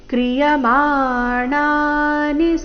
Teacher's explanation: ಕ್ರಿಯಮಾಣಾನಿ ಮಾಣ ಎರಡು ದೀರ್ಘ ನಿ ರಸ್ವ